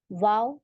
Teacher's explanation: दोनों होठों को गोल कर से वाव अदा होता है · दोनों होठों को गोल करने से वाव अदा होता है। अब ये इसमें वाव में इतना बड़ा हमें मुंह नहीं खोलना होता, वाव ऐसे नहीं करना।